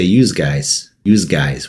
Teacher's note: When in Philadelphia, they say use guys with like a Z sound at the end.